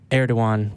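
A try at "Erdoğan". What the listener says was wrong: I heard a G.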